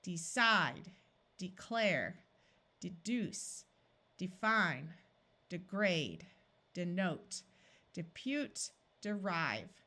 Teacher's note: If people wanted to emphasize the word, they might clearly say the long E, like, I am going to decide to do it. But most of the time when people are speaking quickly, these long E sounds disappear and sound more like a short I because the first syllable is not accented and the second one is. Notice that in all of these words, we have a silent E making the vowel 2 letters before it have its long sound. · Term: short I sound